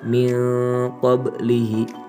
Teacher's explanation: Ikhfa ab'ad ini dibaca dengan berdengung tetapi dengan ukuran nada suara yang pendek. Bacaan ikhfa ab'ad sendiri biasanya akan mengarah kepada bunyi eng.